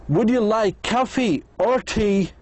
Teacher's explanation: In yes/no question, the answer is yes or no. The speaker's voice goes up 2 times. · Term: intonation